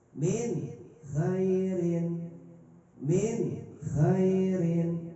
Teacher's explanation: Ketika kha bertemu nun mati, maka nunnya harus jelas.